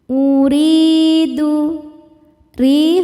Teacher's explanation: Sebab ya sukun sebelumnya baris kasrah. Cara bacanya panjang dua harakat. · huruf ro dibaca tarqiq sebab barisnya kasrah. Cara bacanya ro dibaca tipis. Uridu, ri hukumnya mad tabi'i dhahiri sebab ya sukun sebelumnya baris kasrah. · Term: mad thobi'i zohiri